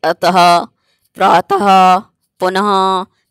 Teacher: तो अक्षर के अंत में लगने वाले दो बिंदुओं को विसर्ग कहते हैं। इनका उच्चारण हल्के से हा की भांति होता है